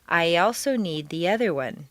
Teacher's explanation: after a long e sound your lips will be pulled back far enough to create a yeah Glide or liaison I also need the other one don't force this sound too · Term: Y glide